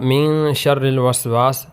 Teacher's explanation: نون ساکن ہے اور نون ساکن کے بعد شین حروف اخفا میں سے